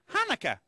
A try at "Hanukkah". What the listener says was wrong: No, more in the back of the throat. Ha. Ha.